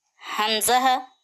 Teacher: हमजाह मखरजे हलकी आखरी हलक से निकलता है जो सीने से करीब का हिस्सा है या मखरजे शजरी जबान के दरमियानी हिस्सा और तालू के दरमियानी हिस्से से या निकलता है।